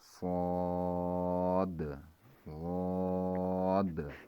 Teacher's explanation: صاد اور غاد جو ہیں، ان دونوں کے آخر میں دال پہ قلقلہ ہوگا۔ جیسے ہم پڑھیں گے صاد غاد، یہ خالی دو حروف ہیں جہاں پر قلقلہ ہوگا، اور کوئی ایک ایسا نہیں ہے جہاں پر قلقلہ ہوگا، خواہ مخواہ میں ہم قلقلہ نہ کریں۔